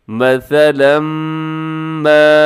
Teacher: اس میں سیٹی نہ ہو، جو لکھا ہوا ہے ثا، اس میں سیٹی نہ ہو۔ مثلا ما، یہاں پر بھی ادغام ہو رہا ہے، مثلاً کے بعد ما لکھا ہوا ہے، یعنی میم آ رہا ہے، تو آپ نے یہاں پر ادغام کرنا ہے۔